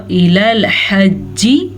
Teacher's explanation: حجی جیم 2 دفعہ پڑھا جاتا ہے شد کی وجہ سے